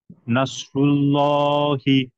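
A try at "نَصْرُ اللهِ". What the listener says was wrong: না, নাতে টান হবে।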